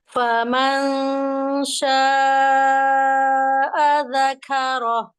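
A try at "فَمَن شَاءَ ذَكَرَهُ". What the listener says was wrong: Famasya itu rendah tapi tetap ditinggikan itu. itu barusan bener. Famasya.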